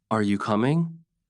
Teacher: The voice rises at the end. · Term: intonation